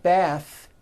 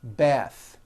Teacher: the word bath is a noun with an unvoiced th